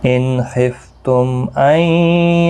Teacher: میم ساکن کے بعد حمزہ آیا ہے، اظہار شفوی ہوگا · نون ساکن کے بعد یرملون کا یا ادغام مع الغنہ ہوگا